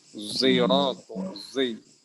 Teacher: Z itu bukan mengembuskan angin ya, tapi jaharnya ngikutin zai.